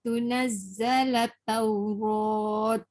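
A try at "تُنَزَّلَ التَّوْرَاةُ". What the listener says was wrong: An tunazzalat Taurah. Jangan zalatau sebab dia ada sabdu dekat ta. An tunazzalat Taurah. Taurah. Dia ta marbutah dia jadi huruf ha. Taurah.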